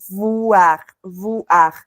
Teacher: la V es dentilabial, ¿no? Entonces los labios superiores tienen que tocar el labio inferior.